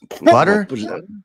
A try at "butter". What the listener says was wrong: Can't even pronounce a damn T.